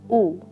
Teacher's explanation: Close back rounded short vowel